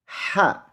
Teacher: huruf H kecil keluar dari tenggorokan ha harus ada angin yang keluar dari mulut kita